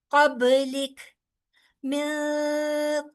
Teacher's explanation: सांस भी थोड़ी सी बाहर आ रही है आपकी और आप साकिन भी उसको कर रहे हैं।